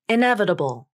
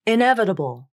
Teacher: notice how the T becomes the flap in this word